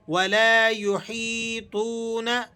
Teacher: یہ واو مدہ ہے، اسے بھی آپ کھینچ لیں گے، نون کو نہیں کھینچیں گے